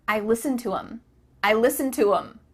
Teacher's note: The word them has the TH cut out, and instead you're saying I listen to them.